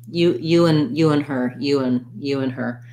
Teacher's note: we reduce it we often leave that d off and it sounds a little more like n